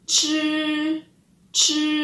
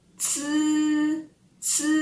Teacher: kalau chi posisi lidah kita lebih menghadap dan nyentuh ke langit-langit atas. Tapi kalau ci itu posisi lidah kita lebih santai dan nyentuh gigi depan kita.